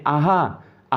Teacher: आहा में कंठ वर्ण इसको कहा जाता है और इसमें कंठ गले का उपयोग किया जाता है